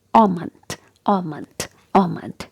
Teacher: L is not there, and A is pronounced as O.